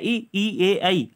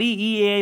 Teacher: अगर आप ई ए आई बोलेंगे तो आपकी जो जीभ है वह आपके ऊपर वाले भाग में टच होगी, अग्र वाले भाग में। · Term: अग्र स्वर